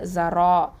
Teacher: 2 ஹரக்கத்தை நீட்டுவோம், ஹெவியாகவும் சொல்லணும், தஃப்ஹீமாக சொல்லணும்